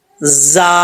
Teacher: ذا، ایسا نہیں کرنا، بغیر سیٹی کے پڑھا جائے گا، تاکہ سیٹی زا میں سیٹی ہوتی ہے، یہ بغیر سیٹی کے نہیں پڑھا جاتا۔ ہم نے زا پڑھنا ہے، زبان کو دانتوں سے تھوڑا سا پیچھے رکھ کے